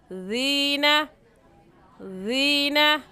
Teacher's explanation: اور یا ساکن سے پہلے زیر آ گئی تو یا مدہ، تو ایک الف کے برابر کھینچیں گے